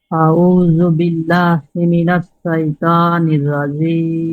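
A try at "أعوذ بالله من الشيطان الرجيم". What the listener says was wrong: এখানে উচ্চারণটা সাইতানির এরকম হয়ে যাচ্ছে, কিন্তু সাইতানির বলা যাবে না, বলতে হবে শাইতানির শ শ এরকম, শাইতানির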